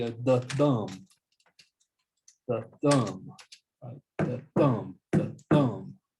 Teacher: it's an unstressed syllable followed by a stressed syllable